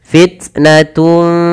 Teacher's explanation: dhammatain bertemu fa, ya, samarkan suara tun ya kepada fa, maka terdengar bunyi fitnatun, bukan lagi fitnatun fala, tapi tahan. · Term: ikhfa